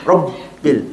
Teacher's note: Ba mati, dia ada sifat dia syiddah. Jadi kena putus. Kat sini tak baca robbil, tak boleh.